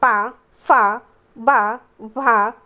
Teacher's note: ये ध्वनियाँ ओष्ठ से उच्चारित होती हैं